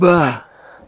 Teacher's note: They are both made with the lips, and they are both made by closing the lips completely so that the air is blocked for a moment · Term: bilabial stops